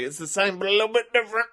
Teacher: he just does this weird vocal fry thing